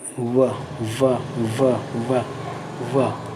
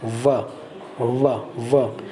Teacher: ऊपर का दांत और नीचे का होठ मिलता है तब वो दंतोष्ठ हो जाता है